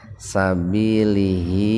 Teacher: Lamnya kan hidup di kasroh itu. Nah, dikarenakan huruf sebelum haknya hidup, maka haknya itu dibaca panjang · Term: mad silah qasira